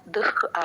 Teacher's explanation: దు పక్కన విసర్గ దుఃఖ్ హా సౌండ్ హాఫ్ హ క్లియర్ గా వినిపించాలండి